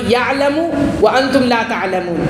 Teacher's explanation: عین ادا ہوتا ہے حلق کے درمیان والے حصے سے اور حمزہ ادا ہوتا ہے حلق کے شروع والے حصے سے.